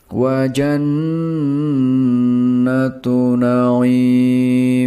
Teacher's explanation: nun dengan tashdeed harus dibaca dengan suara sengau karena itu adalah bacaan ghunnah musyaddadah. Terakhir, huruf ain di sini dibaca panjang, selama tiga alif atau enam harakat.